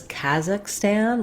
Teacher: with an A black cat vowel in both places